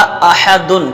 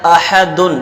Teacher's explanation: حمزہ پر زبر ہے اور حمزہ کو بغیر کھینچے پڑھیں گے اور تحقیق سے پڑھیں گے۔ ہا پر زبر ہے تو ہا کو بغیر کھینچے پڑھیں گے اور ہا کا مخرج درمیان حلق ہے۔